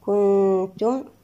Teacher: التقت النون مع التاء، لدينا إخفاء حقيقي بغنة مرققة المرتبة العليا.